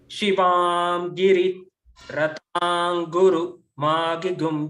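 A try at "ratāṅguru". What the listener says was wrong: Ratanguru, ru down. Ratanguru.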